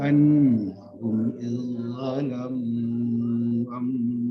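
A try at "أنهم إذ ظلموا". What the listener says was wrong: Diulang Pak Haji, saya dengarnya annalahum, tidak ada la di situ. Annahum saja.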